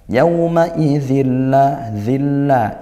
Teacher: idgham bila ghunah tanwin bertemu lam ya masuk tanpa dengung